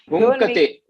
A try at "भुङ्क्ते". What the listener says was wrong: It is just half. Bhunkte, Bhunkte. bhunkate you do. Bhunkate nahi, bhunkte.